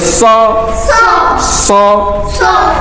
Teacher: سا موٹا حرف بھی ہے، تو اس میں ہمیں زبان منہ کو بھر لینا ہے